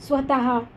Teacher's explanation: यात ह या वर्णाला थोडासा हिसडा देऊन उच्चार केला जातो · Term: विसर्ग